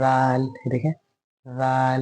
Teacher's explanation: जाल की तरह व में भी मेरी जबान हल्की सी बाहर आ रही है, ऊपर के दांत में टच हो रही है